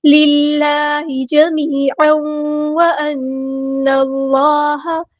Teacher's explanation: پہ دیکھیں یا مد آئی ہے تو مد اصلی کریں گے، تنوین کے بعد آیا واو، ادغام مع الغنہ ہو